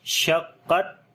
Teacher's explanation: قاف کو موٹا پڑھیں گے اور تھوڑا سخت کر کے پڑھیں گے